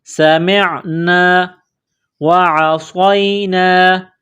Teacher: سین میں سیٹی کی آواز پیدا کرنی ہے، سین کو باریک کرنا ہے، میم کو عین کے ساتھ ملانا ہے۔ · سمعنا وعصینا، عین کو گلے سے نکالیں گے زور لگا کر، صاد کو موٹا کرنا ہے، صاد میں سیٹی کی آواز پیدا کرنی ہے، صاد کو یا کے ساتھ ملانا ہے۔